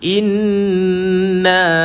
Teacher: Hamzah pada bawah i jumpa dengan sabdu nun, tekan dan lepaskan nun. Ingat wajib al-gunnah, kita tekan dan lepaskan dia, panjang sikit menekan tu.